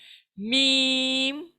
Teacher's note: इसका मखरज है बंद होठों के खुश्क हिस्से से, यानी दोनों होठ अंदर को जाएंगे और मीम अदा होगा।